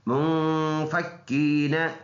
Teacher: ناک میں آواز لے کے جائیں گے اور کاف کے اوپر شد ہے، سختی کے ساتھ پڑھیں گے